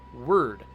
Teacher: you don't pronounce an o in there you don't pronounce an e or an i or an a or a u you're just pronouncing an r